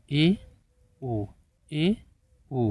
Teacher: स्थिति में कुछ अधिक खुलता है मुंह आधे से कम खुलता है आधा नहीं खुलता है आधे से कम खुलता है